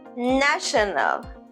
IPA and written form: ˈnæʃ.ən.əl (national)